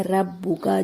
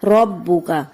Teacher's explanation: را پہ زبر ہے جس کو ہمیں موٹا پڑھنا چاہیے، پڑھنا چاہیے، باریک پڑھ دیا جاتا ہے ربک، جو کہ درست نہیں، درست ہے ربک۔